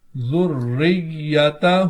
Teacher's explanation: آخر میں کھڑی حرکات ہے الٹے پیش کی صورت میں، تو اس کو کھینچ کر پڑھیں گے